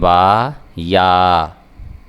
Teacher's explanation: با اپنے جو دونوں ہونٹ ہیں وہ ملا کے ہم پڑھیں گے